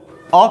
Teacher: अ के उच्चारण में जीभ का मध्य भाग काम करता है। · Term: मध्य स्वर